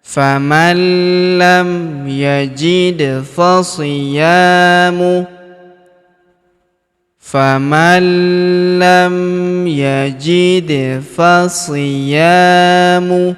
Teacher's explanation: Huruf da berharokat sukun kita pantulkan atau kita qalqalahkan.